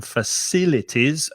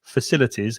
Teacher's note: and stress the second syllable